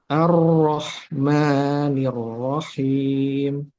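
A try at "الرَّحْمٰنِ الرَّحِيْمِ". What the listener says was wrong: Masih yang bibir yang maju. Nirrohin, salah ya. Nirroh, nirroh. Jadi pengucapan huruf ro itu tidak perlu dengan bibir. Ro, salah ya. Huruf ro itu tebal, tidak perlu dengan bibir yang maju.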